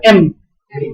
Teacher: Ketika ngucap M, N itu udara, ya, itu kan ditutup mulutnya. M, udara keluar dari hidung. Mulut bilabial itu betul, ya. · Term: bunyi nasal